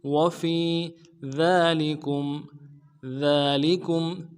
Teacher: ذال کے اوپر کھڑا زبر ہے، کھڑا زبر کو ایک الف دال میں کھینچیں گے۔ لام کو نرم سے ادا کریں گے، ذالی کاف کو میم ساکن کے ساتھ ملانا ہے، میم ساکن میں اظہار کریں گے۔